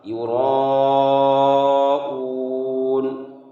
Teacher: مد متصل کو 5 الف کے برابر کھینچ کر پڑھتے ہیں۔ تو 5 الف کی مقدار جیسے آپ کی انگلی ہے، اس انگلی کو الگ الگ شمار کریں گے۔